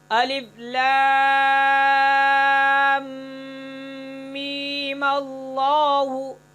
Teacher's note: فرق یہ ہے کہ می کی جو یا ہے اس کو 1 الف کے برابر کھینچیں گے، 3 الف کے برابر نہیں کھینچیں گے، اور غنہ کیے بغیر دوسرے میم کو لفظ اللہ سے ہم ملا دیں گے۔